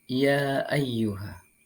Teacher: ya ayyuha dalam kalimat tersebut terdapat hukum bacaan Mad Jaiz munfasil cara membacanya Yakni dengan memanjangkan dua atau empat atau lima ketukan